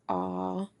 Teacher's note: Now when we make the a sound, our lips are as though we are kind of yawning. So a our jaw is opened at the widest point and our tongue is low and central. It is also lying flat on the bottom. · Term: tense vowel phone, ah sound